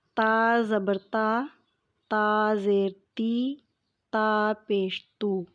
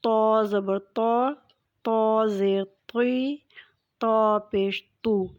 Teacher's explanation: تا بہت نرمی سے ادا ہونے والا حرف ہے، جبکہ تو حروف مستعلیہ میں سے ہے۔ تو اس کو تھوڑی بھاری آواز کے ساتھ ادا کریں گے تاکہ ان دونوں میں واضح طور پر فرق کیا جا سکے۔